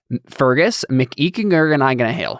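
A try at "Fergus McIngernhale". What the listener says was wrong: Where did the second G come from? There's no second G coming.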